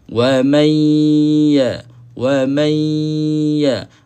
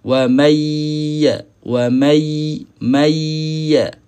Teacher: Huruf nun naik ke hidung. Berlaku ni serentak berlaku. · nun mati bertemu dengan huruf ya. Yang ni kita kena dengungkan. Idgham ma'al ghunnah.